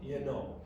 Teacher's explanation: So the oo becomes a schwa.